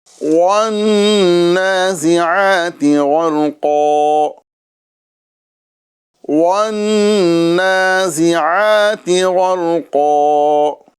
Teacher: نون مشدد ہے، یہاں پر ایک الف کے برابر آپ گنہ کریں گے ساتھ ہی ساتھ نون کے اوپر کھڑی حرکات ہیں، اور کھڑی حرکات کو ایک الف کے برابر کھینچ کے پڑھا جاتا ہے۔